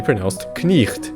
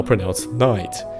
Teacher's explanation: used to be pronounced knicht, but is now pronounced night. The K has become silent